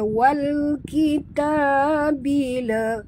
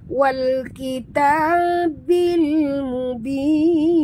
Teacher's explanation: bunyikan lam yang mati dengan jelas tanpa lantunan. Jangan baca wal kita bila, bukan bila tapi bil. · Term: alif lam qamariyah